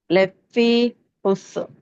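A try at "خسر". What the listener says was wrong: அதான் பிழை ஹுசுர் ஹுசுர் ங்கிறது பிழை ஏன் ஹுசுர்ங்கிறது பிழைன்னு சொல்றோம் அங்கேயும் சீனை கலக்க கூடாது ஹுஸ்ர் ஹுசுர் ஹுஸ்ர் ஹுஸ்ர் ஹுஸ்ர் அது பிழை இஸ் வரக்கூடாது ஹுஸ் ஹுஸ் இஸ்ஸும் இர்ரும் ஜாயின் ஆகும் எஸ் அவ்வளவுதான்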